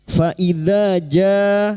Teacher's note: huruf dza dengan fatha bertemu dengan alif, kita panjangkan selama dua harakat, yang merupakan mad thabi'i.